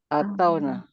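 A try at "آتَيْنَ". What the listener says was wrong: What tau? Sukun and nun. ya. Not wow. Ataina.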